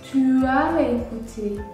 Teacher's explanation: J'effectue l'enchaînement entre les voyelles. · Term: enchaînements vocaliques